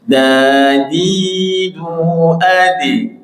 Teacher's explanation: Bawahnya itu setelah ha, kha, dal, ujung lidah menyentuh tempat tumbuhnya gigi